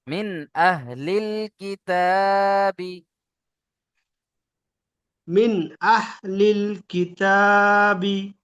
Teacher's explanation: এখানে ছোট হা আছে, গম্ভীর আওয়াজে হবে, আপনার হালকা আওয়াজে বড় হা হয়ে যাচ্ছে, এটা একটু খেয়াল রাখবেন।